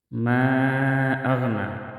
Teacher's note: ادھر ما اغنا بھی مد منفصل ہے، مد منفصل کو 4 الف کے برابر کھینچ کر پڑھیں گے